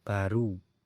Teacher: kata baru yang memiliki dua puncak kenyaringan, yakni bunyi a pada kata ba dan bunyi u pada kata ru